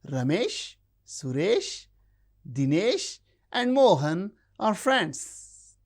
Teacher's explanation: We use rising tone when we count things 1, 2, 3, 4, 5. The last one takes the falling tone.